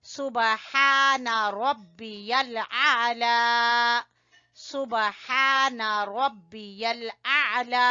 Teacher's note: आइन को आपने बेटा गले से निकालना है।